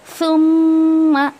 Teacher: ज़बान की नोक को थोड़ा सा बाहर निकाल के आपको सा अदा करना है। और यहाँ पे मीम पर आपको 2 काउंट्स ऑफ गुन्ना देना है।